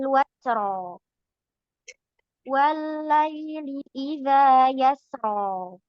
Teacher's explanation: rnya dibaca tafhim kecuali di ayat kelima. Di ayat kelima rnya dibaca dibaca tipis.